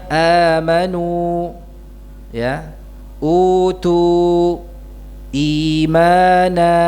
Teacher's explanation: dipanjangkan seukuran dua harakat ya contohnya amanu ya utu imana ya Ini hamzahnya dibaca panjang seukuran dua harakat saja · ini hamzahnya dibaca panjang seukuran 2 harakat saja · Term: mad badal